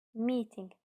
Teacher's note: Vurğu ilk hecanın üzərinə düşür.